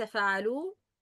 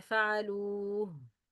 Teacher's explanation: we should produce the sound of ha in the end when we stop on the word.